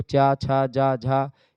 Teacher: च छ ज झा यह स्पर्श संघर्षी व्यंजन में आते हैं